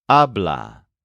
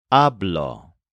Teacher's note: the stress of these words is on the first syllable which sounds like AB the part that changes doesn't get stressed